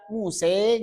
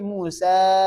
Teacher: Jangan sampai membunyikan mad dengan bunyi imalah.